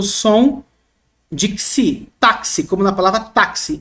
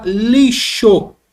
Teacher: Esse X carrega dois fonemas. O CS ou KS, tá bom?